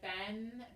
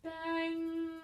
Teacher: So that one actually, it becomes like an NG sound rather than something that's the tip of the tongue behind the front teeth, like ben. It's the middle of the tongue coming up to where the soft palate and the hard palate meet.